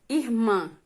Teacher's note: a oxítona, sílaba tônica, né, que é a última sílaba.